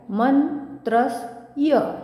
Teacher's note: आता म वर आघात पुन्हा येईल कारण की पुढे जोडाक्षर आहे